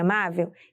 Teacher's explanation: Se verificarmos a posição de cada sílaba de amável, veremos que temos a última sílaba vel, a penúltima sílaba má e a antepenúltima sílaba a. A sílaba tônica de amável é a sílaba má, que é a penúltima sílaba da palavra, e por isso ela é classificada como paroxítona.